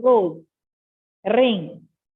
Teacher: Whereas जो एक sound है, देखिए, this is not an explosion. It's called trill, the vibration of air.